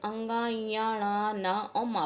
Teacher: बच्चों ये बोलने में ही ऐसे लग रहा है कि जैसे जब हम इनको बोलते हैं तो हमारे नाक से कुछ अजीब आवाज़ आती है और तब ये बाहर निकलते हैं, यानी कि ये वर्ण जो हैं ये नासिका को स्पर्श करते हुए बाहर निकलते हैं